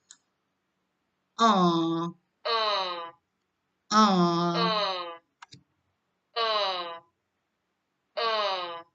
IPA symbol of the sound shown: ʊ